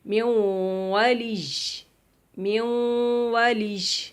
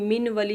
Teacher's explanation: تو یہ نون ساکن ہے، اس کے بعد واو آ گیا ہے، ینمو کا آخری لیٹر واو. تو واو نون ساکن کو واو میں داخل کریں گے اور غنہ کریں گے. میوں والیج، میوں والیج یعنی من ولی ہے نا، لیکن من ولی نہیں پڑھیں گے، میوں والیج، میوں والیج. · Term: ادغام بالغنہ